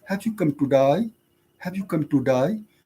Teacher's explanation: they have the long vowel sound. So day becomes die. You can say gay becomes guy, something like that, to die.